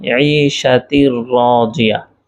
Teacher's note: তারপর হচ্ছে আচ্ছা, আরেকটু উদাহরণ বলি যে ফি আইশাতির রাজিয়া, এখানে তার মধ্যে তানবিন তারপর র, যার কারণে এখানে গুন্না হয়নি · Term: ইদগামে বেলাগুন্না